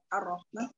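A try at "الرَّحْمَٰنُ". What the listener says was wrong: Ma, coba ma-nya jangan hidung. Ma.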